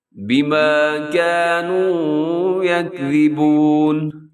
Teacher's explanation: یہاں زا نہیں بلکہ ذا لکھا ہوا ہے جس کو نرم پڑھتے ہیں، جس میں سیٹی نہیں ہوتی